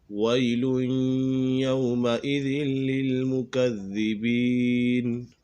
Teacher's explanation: یہاں پر تنوین کے بعد یا حروف یرملون میں سے ہے تو یہاں ادغام یرملون ہوگا، یعنی غنہ کر کے پڑھیں گے